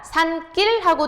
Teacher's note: 뒷말이 지금 예사소리가 된소리로 발음이 되죠